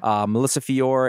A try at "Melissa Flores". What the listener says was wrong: Flores. Yeah, you said Fior, Melissa Flores. Well, it's a pretty big difference.